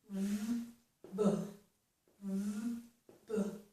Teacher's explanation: there should be a small puff of air that comes out when I make that sound.